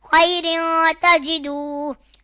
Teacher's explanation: تنوین کے بعد حروف اخفا میں سے تا آ رہا ہے تو اخفا ہوگا، یعنی گنہ کر کے پڑھیں گے